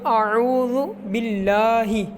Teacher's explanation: لام کے اوپر کھڑا زبر ہے تو اس کو ہم لمبا کریں گے · باللہ جیسے نارمل طریقے سے ہم اللہ کہتے ہیں ویسے ہی پڑھنا ہے، لیکن اس کو موٹا نہیں کرنا کیونکہ اللہ کے لام کے پیچھے با کے نیچے زیر ہے، تو اللہ کے لام کے پیچھے جو حرف ہے اس کے نیچے زیر ہے، تو اس کی وجہ سے زیر کی وجہ سے ہم اس کو باریک پڑھیں گے۔